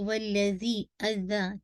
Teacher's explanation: ज़ाल का मखरज आपके टिप ऑफ द टंग आपके दाँतों के फ्रंट टीथ के है ना उसके बिल्कुल एजेस के साथ लगेगी दाँतों के पीछे नहीं रखेगा वरना ज़ाई का मखरज आ जाएगा ठीक है।